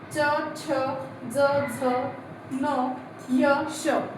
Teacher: बोलताना आपली जीभ जी आहे ही दातांच्या मागच्या हिरड्या साईडला लागत असते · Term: कठोर टाळू व्यंजने